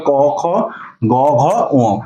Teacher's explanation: এই নরম তালু এবং জিহ্বার মূলের যে সাহায্যে যে ধ্বনিগুলো উচ্চারিত হয় সেটাই হলো কণ্ঠ